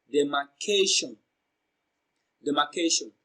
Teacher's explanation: So the third syllable K receives the stress because it is pronounced louder and longer.